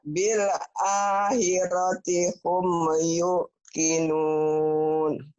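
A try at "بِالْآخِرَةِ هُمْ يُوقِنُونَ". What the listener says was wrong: jangan ditekan. You.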